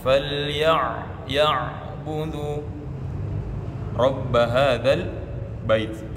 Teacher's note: perhatikan hurufnya ain, tekan di tengah tenggorokan